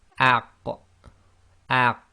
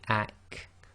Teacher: The qaf is slightly behind the kaf. So again, with the qaf, we have a slight echo.